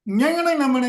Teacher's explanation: ஞங்கனை நமனை என்று சொல்கின்ற போது மூக்கில் இருந்து அந்த ஒளி வருவதை நம்மால் உணர முடியும்